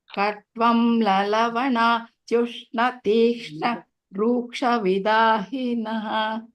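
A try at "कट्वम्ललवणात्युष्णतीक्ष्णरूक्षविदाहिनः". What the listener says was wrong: Yeah, good.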